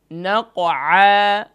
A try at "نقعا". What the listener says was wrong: آخر مني محسوس کروایا آخر میں الف ہے نقعا نہیں نقعا دیکھیں فا کے بعد واو ہے واو کے بعد سین ہے تو سین کو لائٹ کریں فوسطن به